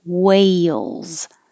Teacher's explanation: your tongue goes very high and then slides down for the L